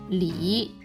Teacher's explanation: its final is 一, and it's a falling rising tone